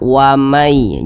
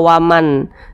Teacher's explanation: Jadi bunyi nun sukun ini dimasukkan ke huruf ya. Jadi ini dibaca wamai, jangan dibaca waman, tapi dibaca wamai. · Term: idgham bi gunnah